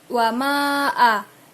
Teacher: Itu adalah hukum bacaan mad jaiz karena ada huruf mad tabai bertemu dengan hamzah, maka cara membacanya panjang seperti mad tabai 2 harokat atau 4 harokat